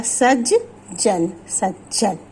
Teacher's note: ता का मेल जब जा से होता है तो ता हमारा जा में बदल जाता है। जैसे सत जन, सत का ता, इसका मेल जब जा से होगा तो ता हमारा जा में बदल जाएगा, ये हो जाएगा सज जन, सज्जन।